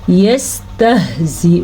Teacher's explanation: یہ ہا سینے سے نکلتی ہے اور حمزہ کو لمبا نہیں کرنا. نہ تو زا کو لمبا کرنا ہے نہ حمزہ کو.